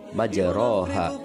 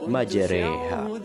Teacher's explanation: mencondongkan bacaan harokat fathah pada harokat kasroh sekitar 2/3-nya. Imalah secara bahasa juga berarti memiringkan bacaan harokat fathah ke arah bacaan kasroh atau memiringkan bacaan alif ke arah ya.